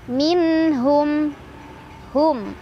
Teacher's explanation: nun sukun bertemu huruf halki, huruf tenggorokan, yaitu ha. Cara bacanya, nun sukun dibaca jelas. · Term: idhar halki